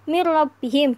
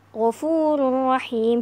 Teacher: jadi bacanya harus jelas enggak pakai dengung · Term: idgham bilagunnah